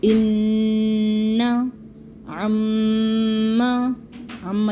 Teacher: नून मुशद्दद और मीम मुशद्दद आ जाए तो 1 से 2 सेकंड तक का गुन्ना इसके अंदर करना है